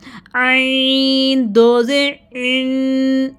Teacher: عین کو گلے کے درمیان سے ہم نے اس کو مڈل تھروٹ سے ادا کرنا ہے، یہ تھروٹ لیٹرز ہیں.